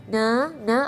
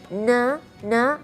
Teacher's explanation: kalau kita melafalkan huruf nun, kita perhatikan na, ada getaran di bagian rongga hidung. Jadi kalau kita melafalkan huruf nun maupun harakat fathah, kasrah ataupun dhamma ataupun sukun, itu ada na, ada getaran di bagian rongga hidung. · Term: sifat gunnah